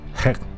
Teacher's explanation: hek, which appears to have a glottal stop